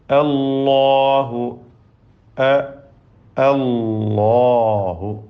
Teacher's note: അതിലെ ലാമും അതിൻ്റെ ദീർഘാക്ഷരമായ അലിഫും തഫ്ഖീം ചെയ്യേണ്ടതാണ്, തടിപ്പിച്ച് പറയണം